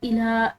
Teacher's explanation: لام ہے اس کے اوپر کھڑی زبر ہے جس کی وجہ سے اس کو ایک الف کی مقدار کھینچ کر پڑھا جائے گا